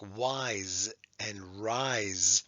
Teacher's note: And we learned what happens with S when it's between two vowels, especially. Many times it doesn't even sound like an S, it sounds like a Z